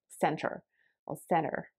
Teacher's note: british english there's like an a sound at the end whereas in american english you can clearly hear the r being enunciated